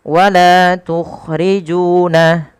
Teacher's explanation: Panjangkan huruf la, ju sepanjang 2 harakat karena keduanya ada bacaan mad tabi'i dan harus sama.